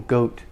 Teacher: O, long O, goat. And the T is not released.